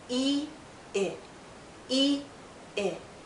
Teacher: our lips are more relaxed when we say I we go from tense to more relaxed e i e i and our mouth opens a bit more